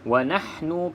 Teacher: senyumkan mulut lebar-lebar supaya ha ni bunyi jelas dia punya angin pedas tu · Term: ha yang pedas